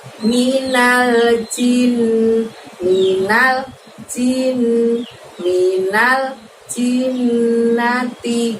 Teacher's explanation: Kemudian al-jinnati, ada nun tasydid lagi, bacaan guna lagi, jadi jin, tahan selama 2 harokat baru bunyi nah.